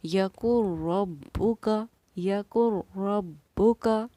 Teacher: نون کی جگہ ہم را کی آواز کے ساتھ ملا کر پڑھیں گے